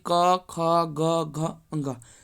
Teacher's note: क वर्ग, यानी क के 5 वर्गों का उच्चारण स्थान कहाँ है? कंठ है।